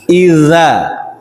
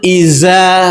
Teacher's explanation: ujung lidah menempel di ujung gigi atas